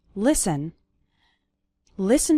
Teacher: The letter T is silent in the word listen